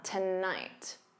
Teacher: So to becomes that unstressed t. And then night is your stressed syllable. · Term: syllable stress